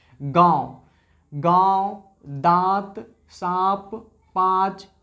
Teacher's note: चंद्रबिंदु तक आप पहुंचने हैं तो आपके नाक और मुख दोनों से हवा बाहर चलती है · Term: अनुनासिक